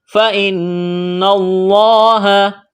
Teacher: نون مشدد ہے، غنہ کریں گے، آواز ناک میں چھپائیں گے، لفظ اللہ کے نام سے پہلے زبر ہے، تو لفظ اللہ کے نام کو موٹا کرنا ہے۔